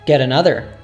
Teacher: the t morphs into a soft d